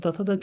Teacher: आपको जैसे बताए थे कि त थ त जो होते हैं त से लेकर त थ द न ये सब चीज जो होते हैं वो दंत से उच्चारण होता है।